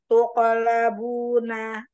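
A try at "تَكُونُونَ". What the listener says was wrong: Tuko, tuko labuna, tuko. Ya, jadi jangan tuko, tuko, ya gitu ya. Jangan ada hamzanya, Masya Allah.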